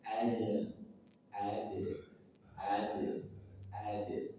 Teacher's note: dalam ayat ini dalnya sukun di tengah kata, maka dia punya sifat qalqalah sughra